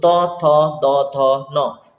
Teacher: हैं त से न तक तो त थ द ध न तो आपकी जीभ और दांतों के बीच में संपर्क बनता है · तो आपकी जीभ और दांतों के बीच में संपर्क बनता है। तो ये आपका त से लेकर न तक का सीरीज है, इसको दंतय बोलते हैं।